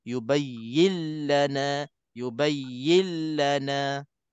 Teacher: Yang ketiganya kita kena sebut idgham bila gunnah bacaannya tanpa dengung. Dimasukkan nun ke dalam lam tanpa dengung.